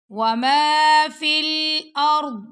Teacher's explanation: र को पुर पढ़ना है और दद को भी मोटा पढ़ेंगे और दद की जो आवाज है ना वो मुंह के अंदर ही रह जाएगी · ضاد کو بھی موٹا پڑھیں گے، اور ضاد کی جو آواز ہے نا وہ منہ کے اندر ہی رہ جائے گی